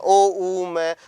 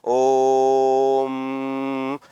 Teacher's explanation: रहा है ये ओ वास्तव में एक प्लुत है यानी कि इसका उच्चारण इस प्रकार से करना है कि हमें तीन मात्रा जितना समय लगे